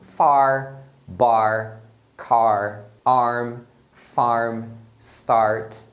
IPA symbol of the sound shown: ɑr